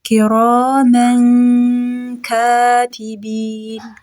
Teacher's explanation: كراما كاتبين را فتحة ألف سكون را ميم فتحتين من ነው ከዛ ካፍ ስለመጣ ኢኽፋ እናደርጋለን